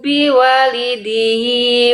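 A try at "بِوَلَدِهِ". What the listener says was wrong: Biwala bukan biwali. Tadi bunda baca biwali.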